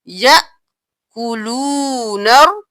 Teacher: یا کے حمزہ کے اوپر جزم ہے تو ہم جھٹکا دے کر پڑھیں گے